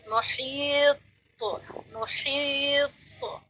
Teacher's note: تو یہاں پر کیونکہ قوا آخر میں واقع ہو رہا ہے لفظ کے، اس لیے یہاں پر قلقلہ زیادہ واضح کیا جائے گا، یعنی ڈبل ساؤنڈ جو ہے وہ زیادہ سنائی دے گی